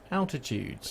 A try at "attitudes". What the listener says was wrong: Attitudes. You said altitudes.